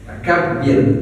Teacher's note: Nah, kabir, birnya itu ro yang tipis. Karena sebelum ro yang sukun atau ro yang kita akan mati, dia berharokat sebelumnya kasro itu.